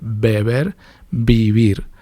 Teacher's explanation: la B y la V se pronuncian igual, es bilabial